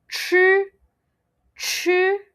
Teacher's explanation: Now for CHI, okay, your tongue will be a bit at the back. So when you pronounce it, it becomes ch, ch.